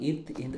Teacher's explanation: மேல்வாய் பல்லின் அடியை நாக்கின் நுனி பொருந்துவதால் இத், இன் பிறக்கின்றன.